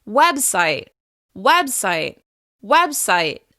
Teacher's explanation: As you can hear, the first syllable receives the most stress and emphasis. That means it's longer, louder, and higher in pitch. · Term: stressed syllable